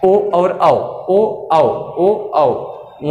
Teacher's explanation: कंठ ओष्ठ की बात अगर हम करें, कंठ से भी हो और ओष्ठ से भी हो, ओ और औ, ओ औ, ओ औ ओष्ठ से।